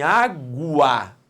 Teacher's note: o U é pronunciado, então não faz parte do dígrafo. Ele é semivogal. Se o U é semivogal, o A é vogal.